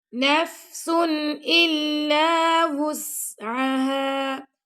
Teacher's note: اب یہ نفس کے بعد آ گیا حمزہ تو یہاں پہ ہم اظہار کریں گے. ٹھیک ہے، نون کی آواز کو ظاہر کر کے پڑھیں گے